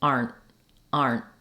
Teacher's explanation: use an unreleased te so basically what that means is that my T you won't hear it I do stop the air for it but it doesn't release